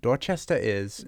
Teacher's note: Sometimes the R comes in when the sound that follows it is a vowel.